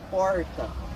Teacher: Em Minas Gerais a gente vai ter o R retroflexo, o R de porta